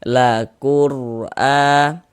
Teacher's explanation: Huruf ro sukun sebelumnya ada harokat dhammah, maka huruf ro sukunnya dibaca tabkhim, dibaca tebal. Ditebalkan huruf ro-nya sehingga pangkal lidah kita naik terangkat ke atas ketika kita melafazkannya